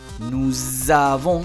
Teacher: se pega la S con la A